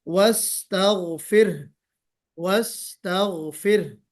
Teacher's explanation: آواز میں تکریر، آواز پلٹ کر آنی چاہیے